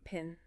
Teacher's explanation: If you put your hand in front of your mouth and say pin, you feel a puff of air on your palm. That's called aspiration.